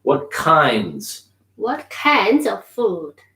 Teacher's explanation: I'm gonna say that N. I'm gonna carry the N, and I'm gonna say the S because it's plural.